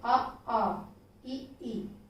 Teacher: उच्चारण में मुख की आकृति गोलाकार नहीं होती उन्हें हम आवृतमुखी स्वर कहते हैं